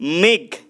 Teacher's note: মেঘ, এটা দেখো একবারে উচ্চারিত হচ্ছে, মেঘ এটা যুক্ত হিসেবে উচ্চারিত হচ্ছে, তাহলে সহজভাবে আমি মনে রাখার কৌশল বলেছিলাম, যেটা যে শব্দগুলো যুক্ত হিসেবে উচ্চারিত হবে সেটা হবে রুদ্ধদল। মেঘ, মেঘের ঘটা হচ্ছে শেষে ব্যঞ্জন ধ্বনি, ঘয়ের পরে কোনো অয়ের মতো উচ্চারণ হচ্ছে না, বা ঘয়ের পরে কোনো স্বরধ্বনির মতো উচ্চারিত হচ্ছে না, এর জন্য এটা কি হবে, এটা রুদ্ধদল হবে।